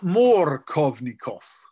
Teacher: the emphasis in that name is on the Kov, right? And in Russian, if you have an O that is in the syllable immediately preceding the stressed syllable of a word, it's pronounced as A.